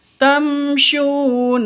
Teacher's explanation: mim mati bertemu dengan syin jelas terang karena izhar syafawi tidak boleh dengung